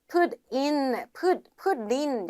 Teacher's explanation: put in 약간 리을 소리가 나줘야 돼요.